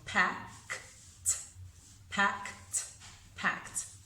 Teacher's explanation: Because pack ends in one of the whispers, k, k, pack. So we're going to use that T sound for the ED.